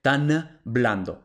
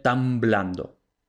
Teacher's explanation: se asimila de que va anticipándose a la siguiente consonante Entonces como la B es bilabial la n se convierte en nasal bilabial la nasal bilabial es la m